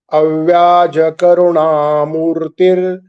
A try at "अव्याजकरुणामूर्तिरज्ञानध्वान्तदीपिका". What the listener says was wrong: You should not say murtir. It is Avyajakarunamurtirajnana.